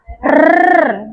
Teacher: Itu lidah bergetar cepat. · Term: getar atau trail